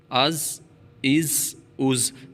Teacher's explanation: زا کی سیٹی نکالنی ہے، ٹھیک ہے، تو سیٹی واضح طور پہ نکلے۔